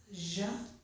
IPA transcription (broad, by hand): ʒ